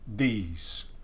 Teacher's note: these you could also potentially describe like this one as being moving to the blade or maybe even dentalizing this is the voiced th